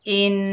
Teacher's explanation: हमज़ा के नीचे ज़ेर है, आगे नून मुशद्दद है, हमज़ा को नून के साथ मिलाकर पढ़ेंगे, एक अलिफ की मिक़दार गुन्ना होगा